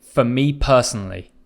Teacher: For me personally, I'm emphasizing me.